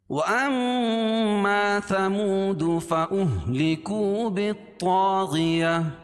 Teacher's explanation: میم مشدد، میم مشدد میں غنہ ہوتا ہے